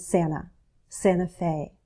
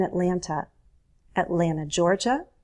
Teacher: Notice how I drop the T in Santa, Santa Fe. You don't have to, but it's very common.